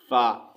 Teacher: फ़ा का मखरज क्या है जी, सनाए उलिया यानी सामने वाले ऊपर के दो दांतों का सिरा नीचे वाले होंठ के अंदरूनी हिस्से से लगे तो इससे फ़ा अदा होता है